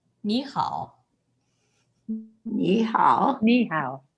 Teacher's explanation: the first third tone, instead of a big turn, very small turn, sound like directly up. Okay, instead of 你好, mostly like 你好.